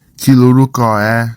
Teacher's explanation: Notice that the nasal sound becomes a l sound when ni contracts to the following word, and the r sound is lost.